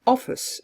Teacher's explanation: they would probably recognize that the <i> is in fact a schwa